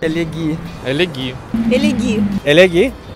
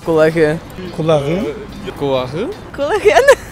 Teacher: Конечные глухие согласны «к», «к», «п» при присоединении аффиксов, начинающихся с гласного звука, гласный звук – это созухсес, переходят в звонкие парные. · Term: чередовании согласных